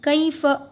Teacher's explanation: कई, काफिया ज़बर कै नहीं बोलिए, गलत है, कई बोलिए, कई, कई फ। फ़ा को भी ऊपर नहीं खींचना है, फ़ जल्द अदा करना है